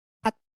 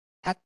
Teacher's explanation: 종성 구간에서 소리가 완전히 끝나는 음성으로 실현이 된다. 얘를 이제 파열되지 못하는 음이다 해서 불파음이라고 하는데 이 불파음으로써 끝나는 것이 이 폐쇄음의 특징입니다.